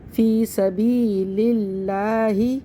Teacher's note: لفظ اللہ کے لام سے پہلے زیر ہے تو اس لفظ اللہ کے لام کو باریک پڑھیں گے